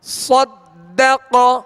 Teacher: قاف پر زبر ہے لہذا اس کو کھینچیں گے نہیں اور حروف مستعلیہ میں سے بغیر ہونٹ گول کیے اسے پر یعنی موٹا پڑھنا ہے